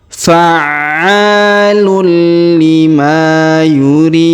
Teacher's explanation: tanwin UN bertemu dengan lam di sini atau Li bertasdid maka kita tahan dan kita tekan ya huruf tanwinnya menghilang melebur ke huruf Li